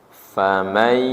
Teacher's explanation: idgham bigunah nun sukun menghadapi ya